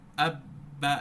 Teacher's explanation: আমার দুই ঠোঁট এমন ভাবে স্পর্শ করলো শক্তভাবে যে সাউন্ডটা বাহির হবে এই বাহির হওয়ার কোন জায়গা নেই নাই যার কারণে সাউন্ডটা পুরোপুরি কি হয়ে যায় অফ হয়ে যায় · উচ্চারণ হয় দুই ঠোঁট নিয়ে এই যে বা এখানে বা টা উচ্চারণ করার সময় শক্তভাবে ধাক্কা লাগে যার ফলে এই উচ্চারণ করা সব কি হয়ে যায় পুরোপুরিভাবে বের